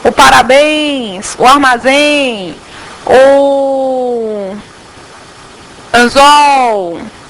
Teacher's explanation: vejam que em todas essas aqui a última sílaba é a que mais se prolonga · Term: oxítonas